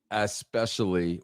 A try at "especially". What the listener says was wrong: Especially, it's especially. You have to pronounce the E. I'm just saying, it's especially.